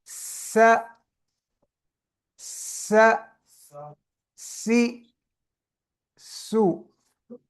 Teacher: سا نرم اور باریک بغیر سیٹی والا، سین جو ہے اس کو کیسے پڑھنا ہے؟ دانتوں کو بند کر کے سیٹی کی آواز، سانس بھی نکالنا ہے، سیٹی بھی نکالنی ہے